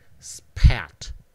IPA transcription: spʰæt